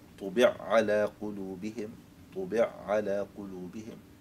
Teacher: أيضا المثال اللي هو طبع على قلوبهم، طبع على قلوبهم، فطبع على هنا نضغم العين في العين فنقرأ طبع على قلوبهم، طبع على قلوبهم، فهنا نضغم العين في العين وننطق بعين واحدة مشددة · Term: الإدغام الكبير